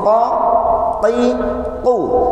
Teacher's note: sifatnya al-jahru, tertahan udara yang keluar